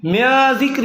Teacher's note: نون ساکن ہے، نون پہ جزم آ گئی ہے، اس کے بعد زال آ گیا. زال جو ہے حروف اخفا میں سے ہے، اس لیے گننا ہوگا